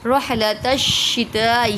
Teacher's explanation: رح کے ہا کو باریک پڑھیں گے، گول والا ہا نہیں ہے، موٹا نہیں پڑھیں گے۔